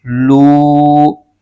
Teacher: لو میں واو مدہ ہو رہا ہے، اس کو ایک الف کھینچ رہے ہیں